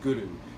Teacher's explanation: And when you pronounce Guru, we ask you to pronounce it with a rolled R a bit